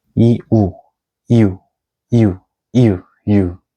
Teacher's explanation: for you, it is actually a combination of e and u sound.